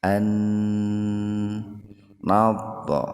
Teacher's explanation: Nun yang pertama dimasukkan ke nun yang kedua dengan mendengung. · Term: idgham bigunnah